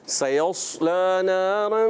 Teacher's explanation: سیصلا نہیں ہے سیص دوسرا صاد ہے. سیصلا تو دوسرا آپ نے صاد موٹا رکھنا ہے، سین باریک